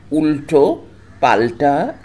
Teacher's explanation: একই রকমভাবে বাংলায় আলতা ও উল্টো শব্দের ল ধ্বনি দুটির ভিন্ন ভিন্ন উচ্চারণ হয়, কারণ বাংলায় তয় হসন্ত ইত্যাদি দন্তধ্বনির আগে যে ল বসে তার উচ্চারণ হয় দন্ত লয় হসন্ত, যেমন আলতা, পলতা, সলতে ইত্যাদি। কিন্তু টয় হসন্ত ইত্যাদি মূর্ধন্য ধ্বনির আগে যে লয় হসন্ত বসে তার উচ্চারণ হয় মূর্ধন্য লয় হসন্ত